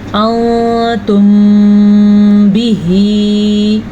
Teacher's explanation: میم ساکن کے بعد اگر حرف با آ جائے تو وہاں پہ دونوں ہونٹوں کو بند کر دیتے ہیں، اور بند کرنے سے اخفاء شفوی کا قاعدہ ادا ہوتا ہے۔